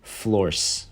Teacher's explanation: she devoices it and instead uses the voiceless alveolar fricative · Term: final obstruent devoicing